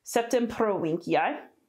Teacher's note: a V that sounds like a W and a hard C